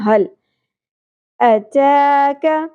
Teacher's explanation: ہا اقصی حلق سے گہرائی کے ساتھ، لام ساکن پہ قلقلہ نہیں کرنا، حل نہیں پڑھنا.